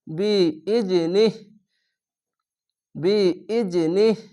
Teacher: শেষ অক্ষরে সাকিন দিবেন দিয়ে নিহ বলে থেমে যাবেন কোন টান হবে না